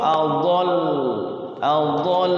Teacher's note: juga ditahan sama seperti adolu kalau Adol itu diwakaf Adol Adol ditahan jadi lamnya itu dobel